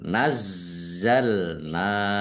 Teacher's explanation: Walau nazzalna, zatnya ada tasdidnya, dibaca double, ditekan dan ditahan biar tampak double